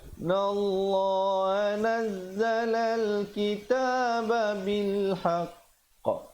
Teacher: Qafnya bersabdu. Tahan sekejap baru lepaskan pantulan. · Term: qalqalah akbar